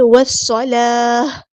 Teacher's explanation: جب ہم یہاں پہ وقف کریں گے تو گول تا کو ہاں میں چینج کر دیں گے